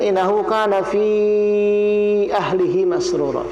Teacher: Fi-nya panjang 4 harokat.